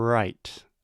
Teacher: our tongue is not stopping the airflow. So we can maintain this sound forever. Not literally forever, but for as long as we want. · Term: liquid consonants